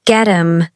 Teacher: So get him becomes get him. The t links to the h which is often silent. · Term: linking